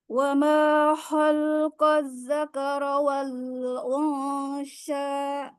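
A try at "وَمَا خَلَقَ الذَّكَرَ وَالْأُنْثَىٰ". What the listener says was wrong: Nah, di sini lamnya bukan sukun tapi fathah. Wa ma khalaqadz dzakara wal unsa.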